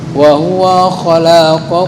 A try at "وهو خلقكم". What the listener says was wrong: Nah, wa pendek. Ini penyambungan huruf nih tinggal masalahnya. Yang pendek dibaca pendek, panjang dibaca panjang. Wa huwa khalaqakum, bukan wa huwa kepanjangan.